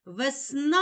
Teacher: у слові весна два склади визначимо наголос покличемо слово весна наголос падає на другий склад на склад сна